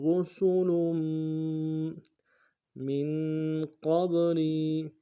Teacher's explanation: را کو موٹا ادا کریں گے، سین کی سیدھی باریک ہوگی، لام کے اوپر تنوین ہے، آگے میم کے ساتھ ملانا ہے، غنہ ادا کرتے ہوئے میم کے اوپر تشدید زور دیں گے